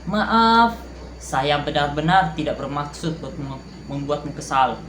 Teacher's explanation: Durasi maaf diperpanjang untuk menunjukkan rasa bersalah kita.